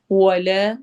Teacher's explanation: ولا واو میں ہون گول ہوں گے اور لا پہ الف مدہ ہوگی، دو حرکہ لمبا ہوگا